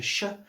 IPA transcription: ʃ